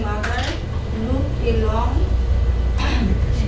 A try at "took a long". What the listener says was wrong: that's a T, not an L. Took.